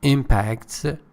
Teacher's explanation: impact is the noun with the stress on the first syllable